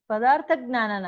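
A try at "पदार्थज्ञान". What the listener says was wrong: ಪದಾರ್ಥ ಜ್ಞಾನ ದೀರ್ಘ ಆಗ್ಬೇಕು. ಅದು ಅನ್ವಯದಲ್ಲಿ ತಪ್ಪಾಗ್ಬಿಟ್ಟಿದೆ. 218 ಅದು ಅನ್ವಯದಲ್ಲಿ ಪದಾರ್ಥ ಜ್ಞಾನ ತಪ್ಪಾಗ್ಬಿಟ್ಟಿದೆ, ದೀರ್ಘ ಆಗ್ಬೇಕು.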